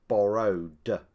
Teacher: If the last sound of the infinitive is voiced, it is pronounced d, as in borrowed.